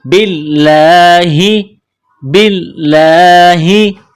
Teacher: والصابئین من آمن باللہ، با کو لام کے ساتھ ملانا ہے، لام میں سختی کرنی ہے، یہاں کڑا زبر ہے، ایک الف کی لمٹ میں کھینچنا ہے، لفظ اللہ کے نام سے پہلے زیر ہے تو لفظ اللہ کے نام کو باریک کرنا ہے، باللہ، باللہ۔